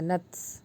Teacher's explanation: تا کے اوپر جزم ہے تو تھوڑا ہمس نکلے گا